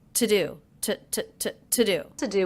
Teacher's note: I noticed with the word to I am reducing that to the schwa sound it's not to do it's to do to do to do